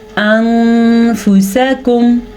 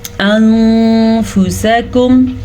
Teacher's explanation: نون ساکن کے بعد والا حرف حروف اخفا میں سے ہے، اسی لیے ہم نون ساکن کے غنّے کو چھپا کے پڑھیں گے · اب یہ فا آیا تھا تو ہم نے اس کو چھپے ہوئے غنّے کے ساتھ پڑھا